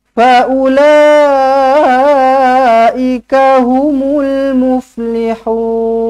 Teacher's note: mad arid lis sukun. Dibaca dengan 2 atau 4 ataupun 6 harakat. Baik, kemudian ayat 17.